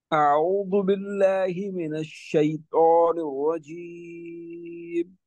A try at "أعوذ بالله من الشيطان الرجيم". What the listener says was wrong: अब तो आप क्या पढ़ रहे हैं, मोटा पढ़ रहे हैं जी, क्यों मोटा पढ़ रहे हैं, खरा जेर खरा जेर।